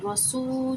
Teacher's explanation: واؤ ساکنہ اس سے پہلے پیش ہے تو واؤ مدہ ہوا، اسے ہم نے ایک الف کی مقدار کھینچنا ہوتا ہے، دو الف کی مقدار بھی کھینچ سکتے ہیں۔